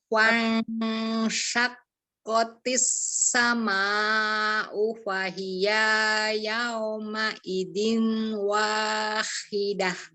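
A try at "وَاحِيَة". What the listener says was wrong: Oke, iya, masih kepanjangan. Kenapa jadi wahidah ya, Terus ada dengung ya, ya Uma Idiu di sini tanwin ketemu wawunya dengung.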